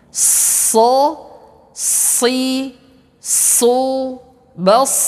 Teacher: huruf sad sama seperti huruf sin. Ya, ujung lidah kita menempel ke gigi seri bagian bawah.